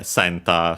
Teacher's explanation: Should be accent on the first syllable.